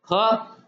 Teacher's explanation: ख ज्यादा श्वास वायु का उपयोग कर रहा है